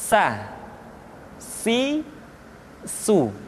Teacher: diucapkan sebagaimana kita mengucapkan huruf sa, yaitu ujung lidah di antara dua gigi seri kita